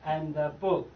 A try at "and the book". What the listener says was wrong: And book. Not anda. And book.